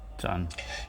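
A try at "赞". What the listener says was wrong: Ini kita nggak bacanya kayak zan ya, nggak pakai zan, tapi kayak c juga. Cuman c-nya itu ya aku bilang tadi jangan terlalu banyak keluar angin, jadi artinya jangan pecah gitu. Kayak c, jadi lidahnya. Kalau saya sih naruhnya c dan tengahnya itu nempel.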